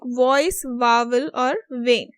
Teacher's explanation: for v, they have said it becomes devoiced when it occurs initially.